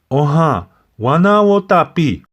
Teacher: you see my voice went up a little bit then it came down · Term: music of the language